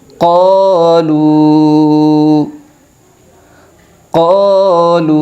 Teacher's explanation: ناسو ناسو قالو قالو، یہاں پر مد منفصل ہوگا، اس لیے حرف مدہ کے بعد حمزہ دوسرے کلمے میں ہے تو لام واو پیش لو کی جو آواز ہے اس کو 3 الف کی مقدار کھینچ کر پڑھے گی